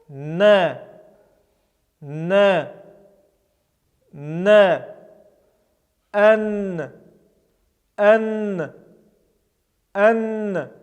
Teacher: этот звук является смычным, однако одновременно это является сонантой, с участием голоса мы его произносим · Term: буква Нунун